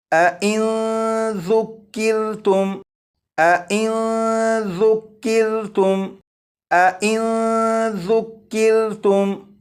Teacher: اس نون ساکن میں اخفاء کے قاعدے کے مطابق غنہ کر کے پڑھیں گے۔ یہاں پر یہ جو میم ساکن ہے، اس میم ساکن میں غنہ نہیں کریں گے۔